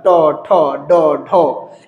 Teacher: ট বর্গীয় উচ্চারণটা মুর্ধা